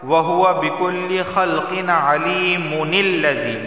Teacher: تنوین کے بعد عین آیا ہے اور عین حروف حلقی میں سے ہے تو صرف اظہار ہوگا، غنہ نہیں ہوگا